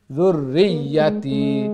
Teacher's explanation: তবে তাসদিদ যেটা জুররিয়াতি তাসদিদ, এগুলা ডবল সাউন্ড হবে